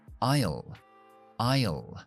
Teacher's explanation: Y el pasillo es aisle. Aisle, utilizando la L oscura después